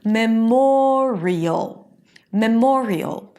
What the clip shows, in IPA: məˈmɔːriəl